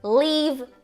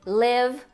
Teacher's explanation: o primeiro mais longo língua mais alta o segundo mais curto língua mais baixa